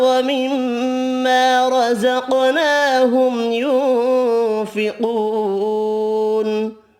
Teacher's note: را پر پڑھنا ہے زبر کی وجہ سے۔ قاف حروف مستعلیہ پر پڑھیں گے، ساکن ہے قاف، قلقلہ بھی کرنا ہے، میم کا اظہار ہوگا، نون کا اخفا ہوگا